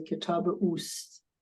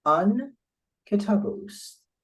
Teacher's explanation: Because there are long vowel here, so to say uast. In fact, in pronunciation, you're welcome to drop the aleph from ast, and you just say kitabe oost